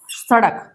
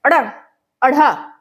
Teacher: ठीक है, ऐसे व्यंजन है ये जो उत्क्षिप्त हैं। जीभ जो है वो सीधी ऊपर ऊपर की ओर घूमती है।